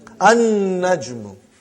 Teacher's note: You did not pronounce lam because noon is a shamsi, sun letter.